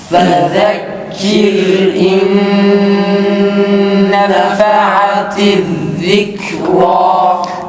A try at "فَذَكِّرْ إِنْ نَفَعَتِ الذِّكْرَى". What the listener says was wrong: Fada şede yok.